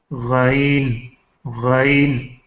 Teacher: یہ ادنائے حلق سے نکلتا ہے